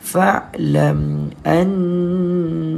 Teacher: Wajib kita dengungkan bacaan fa'lam annahu. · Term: wajibul gunna